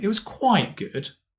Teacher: Notice the stress is on, Quite,